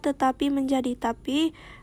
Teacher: proses penghilangan atau penanggalan satu dari atau lebih fonem pada awal kata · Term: aferesis